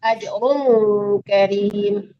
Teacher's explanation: Ajrun didengungkan ke kof ya, disamakan ke kof.